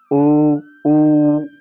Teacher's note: ઉ ની અંદર ઓઠ ભેગા થાય છે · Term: ઓષ્ઠ